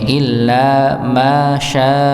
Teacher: maka syinnya dipanjangkan empat empat harakat. Mimnya dibaca dua harakat, syinya dibaca empat harakat. · illa tetap lamnya dengan tasydid maka dihentakan ng illa masyaallah ya maka syinnya dipanjangkan empat empat harakat. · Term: dihentakkan